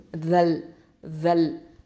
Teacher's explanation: இந்த நுனி நாக்கு மேல் முன்பற்களுக்கு கீழே வச்சு சொல்லணும், தரஃபுல் லிசான் எழுத்து